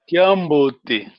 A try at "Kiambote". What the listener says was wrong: Well done. Well done.